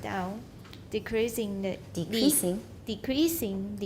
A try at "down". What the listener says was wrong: Don't make it too long.